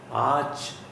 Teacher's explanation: As cha sound is coming, so ra will not be produced here.